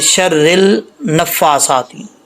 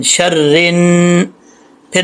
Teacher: را کو نون کے ساتھ کنیکٹ کریں گے، الف اور لام جو ہے اس کو ہم سکپ کر دیں گے ، اس کو چھوڑ دیں گے، را کو نون سے کنیکٹ